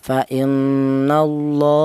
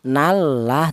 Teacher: lafal Allah ini didahului huruf yang berharakat fathah dibaca tafkhim atau dibaca tebal.